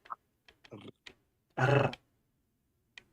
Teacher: You put your lips back into your mouth and then you roll your tongue off that, and it creates a unique sound. The labial-lingual trill.